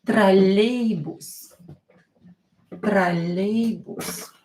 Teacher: Троллейбус, or not stressed. Pronounce it as A.